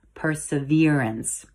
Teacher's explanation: it's actually pronounced perseverance with emphasis on the v syllable